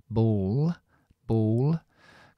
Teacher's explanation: No solamente la punta sino aplanamos más lengua arriba dejamos el sonido lateral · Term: l oscura